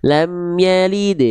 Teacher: lam yalid itu qalqalah sugra karena di tengah kalimat ringan aja